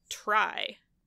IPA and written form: tɹai (try)